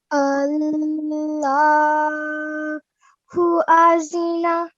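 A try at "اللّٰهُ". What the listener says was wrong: Okay, just remember, due to this mad kabir, you're going to end up elongating it. Allahu Allahu. Now this the sound is very different. You cannot give it a z sound, okay?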